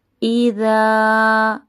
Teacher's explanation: اب یہاں پہ الف مدہ ہو رہا ہے، ہم اس کو ہلکا سا کھینچیں گے۔